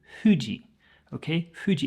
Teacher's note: in Japanese, they wouldn't say Fuji. They don't have that hard F sound.